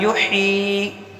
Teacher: تو یہاں والی یہاں پر پیش ہے، نہیں کھینچیں گے. یہاں پر ہا پر یا مدہ ہے تو ہا کو ایک الف کے برابر کھینچیں گے · اور ہا کا بھی مخرج کا دھیان رکھیں. ہا کا مخرج جو ہے درمیان حلق ہے